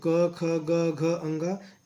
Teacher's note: क, ख, ग, घ, ङ जो कंठ से बोले जाते हैं। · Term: क वर्ग